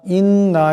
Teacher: ইয়া মারইয়ামু ইন্নাল্লাহা, ইন্না এখানে নুন মুশাদ্দাদের একালে পরিমাণ গুণ হবে।